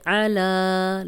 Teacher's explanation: اب عین کی کلیئر آواز آنی چاہیے، الا پڑھیں گے تو حمزہ بن جائے گا ، اور اس طرح پھر قرآن کا ترجمہ بدل جاتا ہے۔